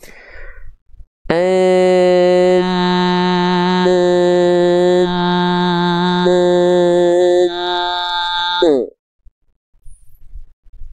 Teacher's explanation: dengungannya ada suaranya masuk ke dalam rongga hidung tapi enggak semua masih ada suara yang keluar dari mulut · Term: dengungan yang tidak kuat